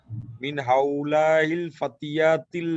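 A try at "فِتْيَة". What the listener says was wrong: ফাতিয়াতি না ফিতিয়াতি? ফিতিয়াতু,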